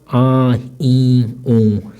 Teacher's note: इसमें जब उच्चारण करते हैं तो हमें नासिका का प्रयोग होता है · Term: सानुनासिक स्वर